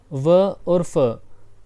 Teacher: बोलते टाइम दांत और होठों का संगम होता है तो दंतोष्ठ